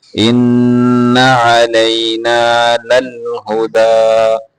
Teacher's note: ان اس کو لمبا نہیں کرنا، غنہ پورا کرنا ہے